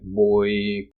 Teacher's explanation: they're always moving from a lower vowel to a higher vowel so this is a trend in English vowels in other words